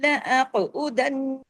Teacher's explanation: قاف ہیوی بھی کرنا ہے، قاف پہ کلکلا بھی کرنا ہے۔ لأقعدن، دن نون پہ تشدید ہے، ڈبل نون ہے، بڑا غنہ ہوگا اکمل۔